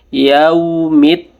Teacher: ini e alif lamnya tidak dibaca langsung ke dal tasdidnya ya